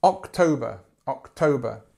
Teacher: the stress is here on the second syllable